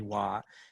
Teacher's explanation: the perfective in declarative form is tone 323